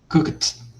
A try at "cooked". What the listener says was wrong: Cooked. Não, você ainda está usando o E. Perceba que você ainda está usando o E para apoiar o T. Não é para falar o E, é só o T.